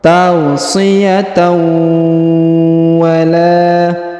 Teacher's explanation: Kemudian huruf tanwin an bertemu dengan waw bertasdid, maka tanwinnya dileburkan ke huruf waw bertasdid, ditahan dan ditekan serta didengungkan 2 harokat